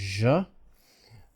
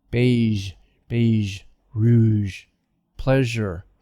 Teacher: take the she and then voice it add vibration · vibration here so that's all it is this voiced sound ja your tongue doesn't touch it's just friction it doesn't touch